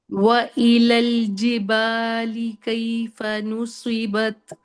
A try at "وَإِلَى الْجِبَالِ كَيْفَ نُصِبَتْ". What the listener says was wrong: بہترین ہو گیا، بہترین ہو گیا،